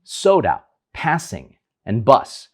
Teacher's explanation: the tip of the tongue is not actually touching the alveolar Ridge but it's approaching it